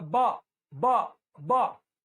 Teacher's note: होठ से होठ लग रहा है तो आप बोल देंगे ओष्ठ है